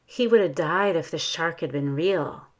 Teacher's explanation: notice i stressed died shark and real